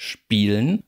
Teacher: im Standard darf man das durchaus auch ohne Vokal mit einem silbischen L, wie man dann sagt, realisieren